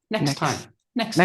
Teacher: It's quite tricky to say because of the two T's. Next time. So, we don't pronounce the first one. Just comes next.